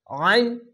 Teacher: আইনটিকে মোটা করে গলা চিপে পড়তে হবে